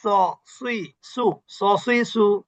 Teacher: সবগুলো জিহ্বার আগা নিচের দাঁতের গোড়া